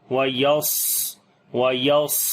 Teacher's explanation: صاد کو موٹا پڑھیں گے، صفت ہمس اس کے اندر آئے گی، سانس کو جاری کریں گے، · صاد کو موٹا پڑھیں گے حروف استعلا ہونے کی وجہ سے، اور اس کے اندر صفت صفیر اور صفت ہمس دونوں آئیں گی۔ صفت ہمس یعنی سانس جاری کریں گے، اور صفیر یعنی کہ سیٹی کی آواز آئے گی۔